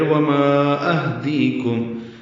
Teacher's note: ہاں ساکن ہے اس پہ ہمس ہوگا. دی یا مدہ ہے، کاف باریک، کم میم ساکن پہ اظہار شفوی.